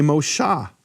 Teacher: Mosheh for Moses, which we do in Tiberian Hebrew, they say Moshah, in fact they don't even have an eh sound, which is really interesting, 'cause a Babylonian Jew could never say Yahweh, 'cause there's no eh in his language: it doesn't exist.